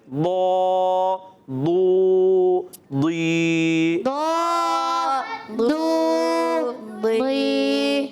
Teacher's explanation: زبان کی کروٹ اوپر کے داڑھوں کی جڑ سے ادا ہوتا ہے